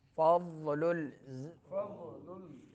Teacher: ضاد زبان کی کروٹ جب اوپر دانتوں کے جڑوں سے جا کے لگے تو ضاد ادا ہوتا ہے